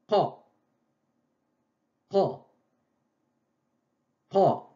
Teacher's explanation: je bloque l'air, je ferme la voie respiratoire au fond de la gorge et je libère. Qa, qa, qa, je bloque et je libère.